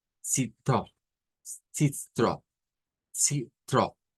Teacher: Y luego encontramos una R gutural.